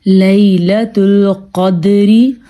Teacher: ہم نے قاف کو پر پڑھا ہے کیونکہ قاف حروف مستعلیہ میں سے ہے، اور دال پہ ہم نے قلقلہ کیا ہے کیونکہ دال کتب جدن یعنی کہ حروف قلقلہ میں سے ہے۔